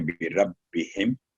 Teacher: اس کے علاوہ جو بربہم، میم ساکن کے بعد نہ تو یہ 2 میم ہیں نہ میم کے بعد با ہے، تو جہاں میم اظہار کا رول کے طور پڑھیں گے بربہم، اس کو میم کو لمبی نہیں کریں گے